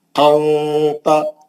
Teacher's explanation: اخفا میں نون کی آواز کو چھپا کے غنے سے پڑھنا ہے، یعنی نون کے مخرج کو زبان کی نوک لگنے نہیں دینا، نون نہیں نکلنا، کلیئر نون نہیں نکلنا، منہ کھول کے زبان کو نیچے پکڑ لینا، نہیں تو اوپر جا کے مسروڑی کو ٹچ ہوئی تو نون نکل جاتا، نہیں نکلنے دینا۔